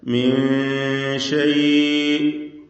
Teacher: മീൻ ഷൈഇ എന്ന് പറയുമ്പോൾ സാക്കിനത്തായ നൂൻ ശേഷം ഷീന് ഇഖ്ഫാ ഹഖീഖി നൽകി നൂനിനെ അവ്യക്തമാക്കി മണിക്കണം, മറച്ചു മണിക്കുക. മീൻ എന്ന് ക്ലിയറാക്കാതെ മീൻ ഷൈഇ അവിടെ വഖഫ് ചെയ്യാതെ ചേർത്തോതുമ്പോൾ ആ ദീർഘം ഉണ്ടാവുകയില്ല.